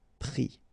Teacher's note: final s not pronounced, but still you need to write it